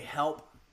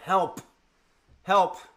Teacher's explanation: the sound check I will often say help and that's because I'm testing the plosive on the P sound